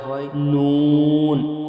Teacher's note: জিবের আগা এবং তার বরাবর উপরের তালুর সাথে লাগিয়ে উচ্চারিত হয়